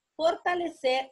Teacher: es una palabra aguda, porque la sílaba de mayor fuerza, o sea, la tónica la tiene en ser